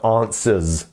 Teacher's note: we end that with a z it's it's almost like a zed here